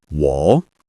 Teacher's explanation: Keep it low and steady. This is a third tone.